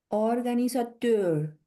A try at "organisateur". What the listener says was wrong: Bien. Organizateur. Très bien.